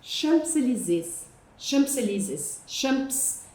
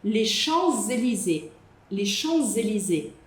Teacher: vocês querem falar esse P, mas não dá para você falar esse esse P. Esse P é mudo.